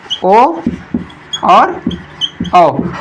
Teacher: ओ और औ जो कंठ और ओठ दोनों से बोले जाते हैं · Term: कंठोष्ठी स्वर